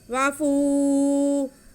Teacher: مِن بقلیہا وقصائہا وفومہا، واو پہ زبر، فا پہ پیش اور ساتھ میں واو ساکن، یہ واو مدہ ہو گیا، فا کے بعد کھینچی جائے گی۔